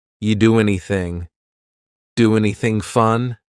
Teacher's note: And then the next word, anything, we sometimes drop the A, and we're going to push those two together because there's two N sounds side by side.